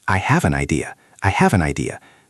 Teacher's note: The V in have links to and the N in an links to idea. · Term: linking